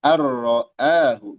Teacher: Ik hakiki kalla innal insana wafi yat qalqat th lat qalqalah throahu arroahu anroahu asalnya gitu ya Tapi ini idgham. Idgham bighiri gunah. Idgham tanpa dengung.